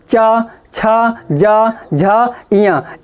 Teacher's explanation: इस तरीके से अगर इन वर्णों को हम पढ़ेंगे, इन अक्षरों को पढ़ेंगे, तो हमारी जो ध्वनि निकलेगी वो कहाँ से निकलेगी, हमारे ताल से निकलेगी। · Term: तालव्य